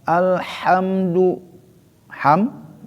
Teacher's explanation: tidak berdengung karena izhar syafawi, mim bertemu sama dal